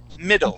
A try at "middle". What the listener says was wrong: All right, pull your tongue back just a little bit. We're going to say middle. Middle. Yes, just like saying ere, middle.